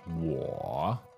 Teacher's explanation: you need to go down and up. Okay, third tone, 我.